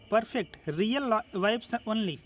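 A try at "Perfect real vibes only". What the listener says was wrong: खा जाते हो बहुत सारे लेटर तो परफेक्ट रियल वाइब ओनली वाइब तो नहीं है वाइब्स है ना और रुक भी जाते हो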